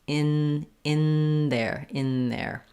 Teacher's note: I still form the N with my tongue behind my teeth, but instead of the tip of my tongue lifting there, I lift a little further back with the tongue. It looks like this, in there. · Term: co-articulation